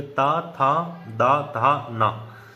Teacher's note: उच्चारण करते समय जीभ हमारे दांतों से भिड़ रही है, दांतों को स्पर्श कर रही है